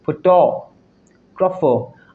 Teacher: in photographer, the emphasis is on the second syllable